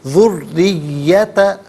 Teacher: را کے نیچے زیر ہے، را کو باریک کر کے پڑھا جائے گا۔